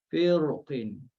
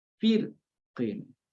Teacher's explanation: Pertama tafkhim ra, firqin. Yang kedua kita tarkikkan ra, firqin. Kena bezalah bunyinya.